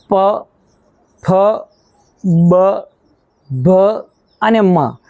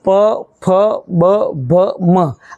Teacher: પાંચ અક્ષરોને બોલવા માટે તમારે બંને હોઠની મદદ લેવી પડે છે. બંને હોઠ જોડાય છે અને પછી હવા બહાર આવે છે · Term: ઓષ્ઠ્ય